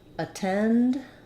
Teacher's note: this letter a um is going to be vowel schwa because the stress in attend is on the second syllable